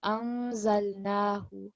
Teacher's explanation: So the first point was obviously we've covered now in our online classes about ikhfa and izhar when we have to produce that light nasal sound on the noon over here. Because it's followed by za, it's going to be a light nasal sound.